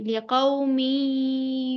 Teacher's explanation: मीम को या से मिला रहे हैं यहां पर गुना करेंगे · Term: इगाम नाकिस